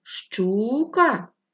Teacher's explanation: який склад видовше тягнули перший Отже наголошений перший склад